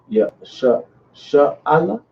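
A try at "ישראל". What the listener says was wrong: Sharala. It's a ra there. So it's like Sharala.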